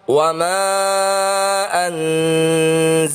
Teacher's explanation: nun sukun bertemu huruf zai atau za adalah bacaan ikhfa hakiki, dibaca mendengung 2 harokat.